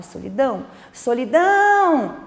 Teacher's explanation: a gente percebe que a sílaba tônica é a sílaba dão então essa sílaba é a sílaba mais forte